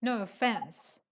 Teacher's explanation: when you want to say no offense the stress is on fence